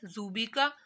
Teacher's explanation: زال کو نرمی سے پڑھنا ہے